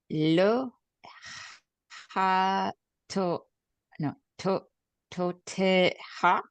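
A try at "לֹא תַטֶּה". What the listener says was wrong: There's no O sound. Ta-te.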